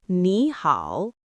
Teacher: why did your voice go up on the first word? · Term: tone sandhi